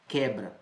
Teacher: Não é ditongo. Não caracteriza ditongo, porque esse U, ele não é pronunciado. Aqui nós temos um dígrafo.